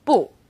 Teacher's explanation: when used on its own bu is fourth tone bu when bu is used before another fourth tone it becomes · When used on its own, 不 is fourth tone